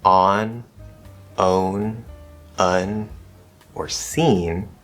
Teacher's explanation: the vowel before m or n will actually be a little colored or very slightly nasalized before m and n, because as we are preparing to create that m or n sound, the velum loosens, and so it doesn't completely open.